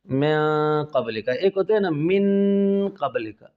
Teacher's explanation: ایک اخفاء مع الغنہ ہوتا ہے اس کی آوازیں ناک اور منہ دونوں طرح سے دونوں سائڈوں سے نکالیں گے